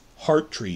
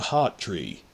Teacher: Scottish clearly pronounces the R in the middle of words. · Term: rhotic accent